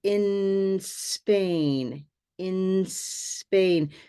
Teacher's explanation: It's a habit that comes from Spanish, but we want to have in Spain, in Spain. So focus on connecting N, the N of it, to the S, in Spain.